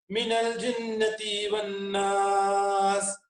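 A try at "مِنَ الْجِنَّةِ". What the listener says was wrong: जिन्नती को भी आप लॉन्ग कर रहे हैं, जिन्नती बिल्कुल लॉन्ग नहीं होगा, उसको पूरा पूरा शॉर्ट करेंगे। भी मिनल जिन्नति वन्नास।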